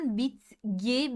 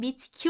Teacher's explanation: T sert bir ses G yumuşak bir ses sert olan yumuşak olanı kendisine benzetiyor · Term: ünsüz benzeşmesi